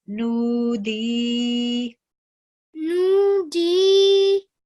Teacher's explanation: So we're going to change the fatha to a sukoon. So because there is dal present before that with a kasra, this will make it a haruf madda. So we'll prolong the sound for 2 seconds